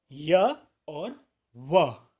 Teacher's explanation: जिनका उच्चारण करते समय जिह्वा का अग्रभाग मुखा अवयव को न तो स्पर्श करता है व्यंजनों की तरह और न ही उनसे दूर रहता है स्वर वर्णों की तरह, इसलिए इन्हें अंतःस्थ या अर्ध स्वर भी कहा गया है।